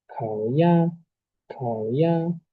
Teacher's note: van a bajar la voz y luego la suben lo más alto que puedan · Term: tono 3 y tono uno